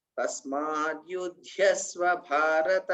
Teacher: మొదటి ధాకు పొక్కిలి లేదు రెండవ ధాకు మాత్రమే పొక్కిలి ఉంది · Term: మహాప్రాణం